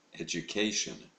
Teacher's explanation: l'accent est mis sur la troisième syllabe